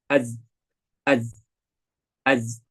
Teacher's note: Ya, tidak ada hamas seperti di sin. Maka 3 tadi kemudian bertemu dengan za tadi, yaitu jadi berat.